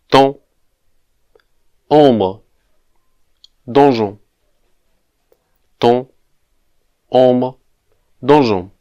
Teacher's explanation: But the French language has at least 3 different vowel sounds that are pronounced when we let the air flow not only through the mouth, but also through the nose. These are the nasal vowel sounds.